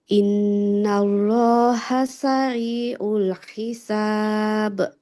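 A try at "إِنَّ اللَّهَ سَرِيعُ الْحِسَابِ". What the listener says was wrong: Innallah, tebalkan lamnya. Innallaha sari'ul hisab.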